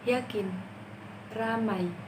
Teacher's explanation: konsonan Y yang merupakan konsonan semivokal palatal bersuara. Konsonan ini hanya memiliki 1 alofon.